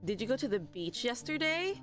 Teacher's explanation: do you notice that my voice is slowly climbing up because that's a question um it's a question sentence so that's the only time our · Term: intonation